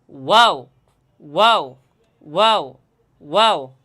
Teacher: মুখটা ঠোঁট দুইটা একটু গোল করে নিতে হবে ঠোঁট এবং মুখের খালি জায়গা থেকে ওয়াও শব্দটা।